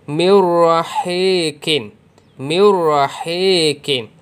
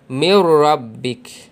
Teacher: Idgham bila gunnah, kita masukkan bunyi nun atau tanwin ke dalam huruf ra dan lam tanpa dengung.